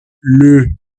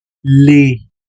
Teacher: el singular es como si cerraran la boca, le y el plural abres la boca totalmente